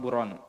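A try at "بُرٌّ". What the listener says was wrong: Bur tasydid.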